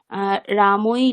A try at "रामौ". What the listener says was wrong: হচ্ছে না, প্রচুর রামই নয়, রামৌ। রামৌ